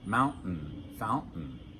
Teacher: when we pronounce those words in American English, for most of us, we don't pronounce the T. It's a stop.